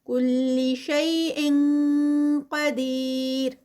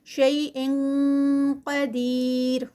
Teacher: اخفا بھی ہیوی والا آئی N G کی ساؤنڈ آئے گی کیونکہ آگے جو ہے وہ قاف ہیوی ہے تو اخفا بھی شیء قدیر 4 کاؤنٹس کا یہاں پر اسٹریچ ہوگا.